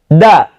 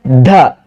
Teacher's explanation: Atau ketika kita ucapkan dengan harokat fathah da, paling gampang dengan cara menempatkan telapak tangan kita di depan mulut kita dan bunyikan huruf tersebut da. Kalau tidak ada angin, tidak ada nafas, tidak ada, berarti kita sudah tepat menerapkan sifat jaharnya pada huruf dal. Kalau ada anginnya da, wah ada anginnya da, terasa di telapak tangan kita, berarti kita sudah keliru.